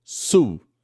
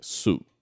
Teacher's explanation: O som de U é um som longo, tipo em baú.